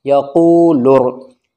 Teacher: अलिफ और लाम नहीं पढ़े जाएंगे क्योंकि रा हुरूफ़ शम्सी है